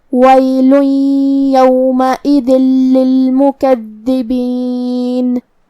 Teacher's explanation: کلمت للمکذبین میں دال کی تشدید کا دھیان رہے. دو حرف کے برابر ہم حرف الدال کو پڑھیں گے، کیونکہ تشدید کی اصلیت دو حرف ہے